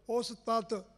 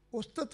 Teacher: ਉਹਨੂੰ ਛੇਤੀ ਬੋਲਣ, ਅੱਧਾ ਤੱਤਾ ਬੋਲਣ ਵਾਸਤੇ ਪੈਰ ਵਿੱਚ ਲਾਇਆ, ਉਹਦੀ ਮਾਤਰਾ ਘਟਾਤੀ ਹੈ।